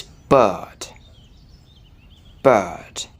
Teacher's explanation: so here we have the vowel uh uh bird so I don't pronounce that R it's not bird it's not perfect or beard but in British